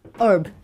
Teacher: However, while you're in America, they often drop the letter H and just pronounce the E-R-B.